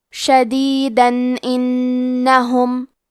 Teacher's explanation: ہم یہ کلمہ کو پوری آیت کے ساتھ ملا کے پڑھے تو حرف الالف کلمت انہم حروف الاظہار میں سے ہے، لہذا ہم یہاں تنوین کو ظاہر کریں گے اور بغیر غنہ سے یہ حکم کو ادا کریں گے